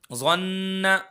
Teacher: ظا کو موٹا کر کے پڑھیں گے کیونکہ حروف مستعلیہ میں سے ہے، اور نون پر غنہ ہوگا۔